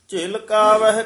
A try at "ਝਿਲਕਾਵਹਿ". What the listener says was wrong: ਕਕਾ ਉਚਾਰਨ ਕਰਨਾ ਘਗਾ ਨਹੀਂ ਬੋਲਣਾ